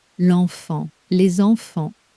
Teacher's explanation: The number 2 ends in one of day 1's silent letters, but the word for children starts with a vowel, so the sleeper wakes up. A little Z glues the 2 words together.